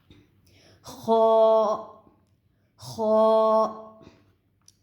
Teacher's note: خا جو ہے یہ ابتدائی حلق سے ادا ہوگا